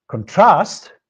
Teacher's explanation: If we stress the second syllable in this word, contrast, it becomes a verb